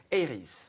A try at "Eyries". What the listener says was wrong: Oui, vous le prononcez à l'anglaise. Eyries, ok.